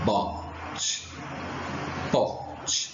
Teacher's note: Há uma pequena explosão, bote, pote. Então, os lábios começam juntos e se abrem, São bilabiais porque nós usamos os dois lábios para a produção desse som. Oral, porque o som sai pela boca e não pelo nariz.